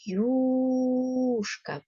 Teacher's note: на початку слова Ми чуємо перший звук й другий у · юшка перший склад наголошений